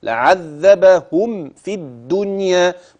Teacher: بتخلص الميم من الفاء بدون غنه واضحه